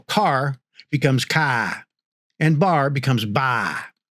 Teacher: This is called nonotic accent which drops the R and it means that the words ending in R are replaced with a vowel sound instead